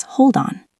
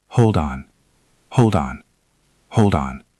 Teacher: Hold ends with a D. On starts with an O. When we link them, that D moves over. It becomes hold on.